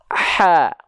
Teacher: Bukan maksudnya seperti rasa-rasa yang teman-teman lafalkan dari tengah tenggorokan. Kalau misalnya ha kecil, dia dihadirkan dengan nafas yang berbisik.